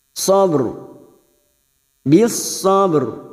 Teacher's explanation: huruf ba qalqala masih tetap nampak qalqala sugro yang mati asli di tengah kalimat maka kita pantulkan